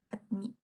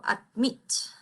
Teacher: aquí la mayor fuerza de voz está en la segunda. Yo no digo admit, Yo digo admit.